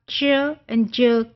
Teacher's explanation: एफ्रिकेट में आपको याद है ना, हमने कहा था कि थोड़ा सा वो ब्लॉक होता है, और ये पोस्ट एल्वियोलर है at the same time, point आपका पोस्ट एल्वियोलर है, और टाइप मैनर क्या है, वो एफ्रिकेट है